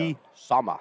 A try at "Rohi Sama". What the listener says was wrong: You can't say it, like, blandly. Like, you know, like, Rohi Sama. It's got to be said Rohi Sama. Like, sharp pronunciation.